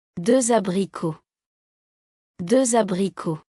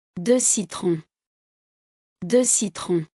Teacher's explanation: Before a vowel. The letter X is pronounced Z.